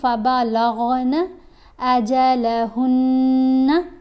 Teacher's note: آواز ناک میں پڑھی جاتی ہے اور 1 الف کے برابر ٹھہر کر غنہ ادا کرنا ہے